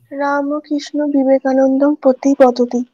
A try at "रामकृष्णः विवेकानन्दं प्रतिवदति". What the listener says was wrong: उत्तमम्।